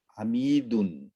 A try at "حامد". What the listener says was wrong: Hamidun. No, there's no ya after the meme. So it's not Hamidun. No, Hamidun means, when you say it that way, it means that there's a ya after the meme, like you're extending. Hamidun. But it's not that. It's Hamidun. Hamidun.